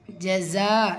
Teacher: ஜஸா இந்த இடத்துல ஒரே வார்த்தையில மத்தை தொடர்ந்து ஹம்ஸா மத்துல் முத்தசில் ஐந்து ஹரக்கத் அளவு நீட்டம் கொடுத்து ஓதணும்